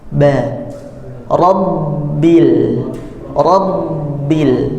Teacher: ba itu di dua bibir, ya, bibirnya bagian dalam, tidak menutup semuanya ba, atau tidak juga menutup keras, tapi menutup lembut saja di bagian dalam bibir, bagian lunak bagian dalam.